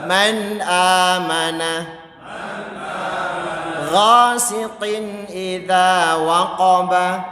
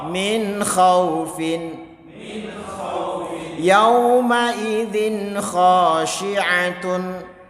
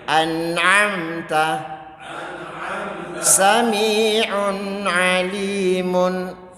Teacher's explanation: Pokoknya bunyi nunnya jelas, tanwinnya jelas. Kuncinya di situ. Tidak didengung, nggak ada dengungnya. Ya, tidak ada dengungnya sama sekali. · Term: idhar halqi